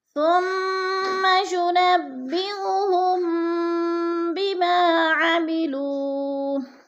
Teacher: ثم کی میم مشدد ہے، غنہ کریں گے، سختی سے جمع کر پڑھیں گے. ينبئهم، ہم پہ جو ہے میم ساکن کے بعد حرف با آ گیا ہے تو ادھر ہے اخفاء شفوی، یعنی غنہ کریں گے، تھوڑا سا ناک میں آواز کو لے کر جائیں گے.